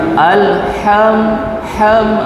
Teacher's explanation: ya alhamdulillah Dia kena tekan sikit ke tengah ya alham HAM kita dapat rasa dia keluar daripada tengah-tengah